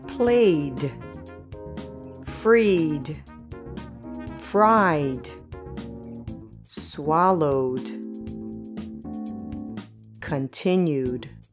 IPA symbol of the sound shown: d